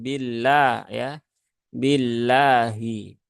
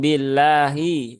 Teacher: lafaz Allah yang dibaca ee ringan ya dibaca tipis dibaca tarqiq